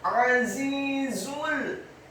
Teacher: Azizul, huruf ainnya ditekankan keluar dari tenggorokan bagian tengah fathah satu harokat. Huruf zanya dibaca tafkhim tebal dengan desis yang tebal kasroh dua harokat karena setelahnya ada ya sukun, dan huruf za yang kedua dibaca tafkhim tebal dengan desis yang tebal dhammah cukup satu harokat karena setelahnya langsung disambung ke huruf lam yang sukun.